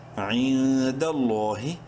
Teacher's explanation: لفظ اللہ سے پہلے زبر ہے، لام کو بولڈ بھی کرنا ہے، گلی کے برابر لمبا بھی کرنا ہے، لام کھڑی زبر لا حاضر ہی. · نون ساکن کے بعد دال حروف حلقی میں سے نہیں ہے، اخفا کریں گے اس نون میں